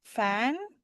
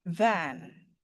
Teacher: ketika kita ingin memproduksi bunyi F sound ya, yang ini voiceless ya, F sound dan V sound, voiced ya